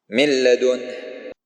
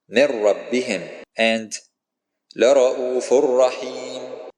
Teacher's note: the first letter gets absorbed into the second letter, but without a nasal sound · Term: Idgham without Ghunna